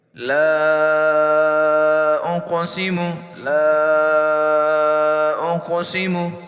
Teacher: قاف موٹا حرف ہے، اس کو موٹا بھی پڑھیں گے، اور حروف قلقلہ میں ہونے کی وجہ سے ساکن حالت میں ہے تو اس کو ہم جھٹکے سے پڑھیں گے۔ ساکن حالت سے مراد کہ اس کے اوپر زبر زیر پیش نہیں ہے، یعنی جزم ہے اس کے اوپر۔